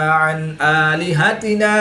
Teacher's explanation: نون ساکن کے بعد حروف حلقی میں سے حمزہ ہے تو یہاں پر اظہار ہوگا، نون ساکن کو ظاہر کر کے پڑھیں گے، غنہ نہیں کریں گے۔ الف مدہ کو وقف کی حالت میں تبدیل نہیں کریں گے بلکہ ایک الف 2 حرکات کے برابر ہی کھینچ کر پڑھیں گے۔